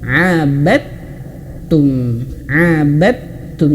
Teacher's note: Jadi huruf dalnya seolah-olah hilang ya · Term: idgham